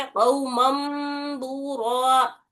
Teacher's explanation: تو ابھی یہ نون کو بدلنا ہے میم سے، او مم پڑھنا ہے اس کو، من نہیں کرنا